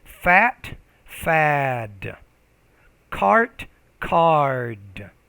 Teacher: when the D's at the end, you have to pronounce the vowel before it a little bit longer